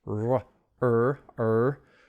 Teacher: The R in Chinese tends to be very bent back. The tongue is bent further back.